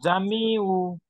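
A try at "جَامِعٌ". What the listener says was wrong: কই জামিউ কই, এখানে দেখেন তো, আইন আলিফ দুই জবর আন, ইয়া পেশ না, ইয়া সাকিন, এটা ইয়া,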